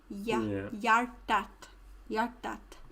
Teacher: that H and that J is more of a Y sound